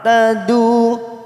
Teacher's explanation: Ta, ain sukun jangan samakan dengan hamzah. Ta, tadu, tadu dhamma bertemu wawu sukun dua harakat